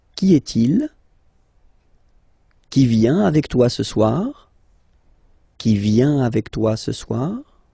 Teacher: you will have to raise your voice a little bit at the end of the question